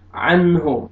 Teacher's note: नून साकिन के बाद हुरूफ हल्क़ी में से हा आ रहा है, आपने यहाँ पे इज़हार करना है, यहाँ पे आपने इख़फ़ा नहीं करना, गुन्ना नहीं करना, नाक पे आवाज़ नहीं लेके जानी।